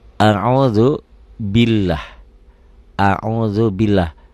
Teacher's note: lafaz Allah dibaca tipis bunyi a